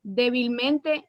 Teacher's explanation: el acento se encuentra en la sílaba anterior a la antepenúltima es decir que sería la cuarta empezando desde el final por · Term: palabras sobres brújulas